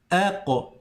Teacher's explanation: Ces 5 lettres, quand je m'arrête dessus, lorsque je fais un soukoun, je laisse rebondir juste après le son. Un petit rebondissement. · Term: qalqala